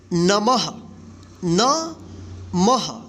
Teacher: इस विसर्ग के लिए यानी दो बिंदी के लिए आपको ह उच्चारण करना है